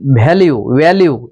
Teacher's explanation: ভি এর উচ্চারণ ভ হয় না, ব আর ভয়ের মধ্যেখানে